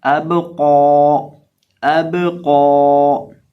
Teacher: हमजा को हम बा के साथ मिलाकर पढ़ेंगे और बा को हिलाएंगे, क्योंकि ये हरूफे कलकला में से है। और कौफ को पुर भी करेंगे और एक अलिफ बराबर लंबा भी करेंगे। तो इसकी आवाज़ आएगी अब कौ, अब कौ। · अब ये जो हमारे पास लफ्ज़ है, इसके अंदर हमारे पास है हमजा बा कौफ और या, लेकिन गौर करें तो हमने या को नहीं पढ़ा। यहाँ या की अदायगी नहीं होगी, या को पढ़ा नहीं जाएगा। या लिखने में आता है, पढ़ने में नहीं आता।